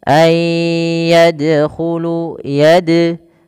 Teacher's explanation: Kemudian pelafal dal, huruf dal di sini adalah bacaan qalqalah yang dimana dalnya harus mantul, tidak dibaca ayyadkhulu.